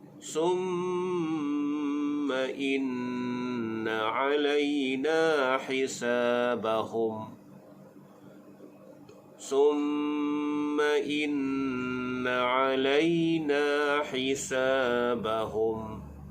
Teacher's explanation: Alayna, lay menjadi hukum lin, na hisa menjadi mad asli, bahum bila waqaf rapatkan bibir.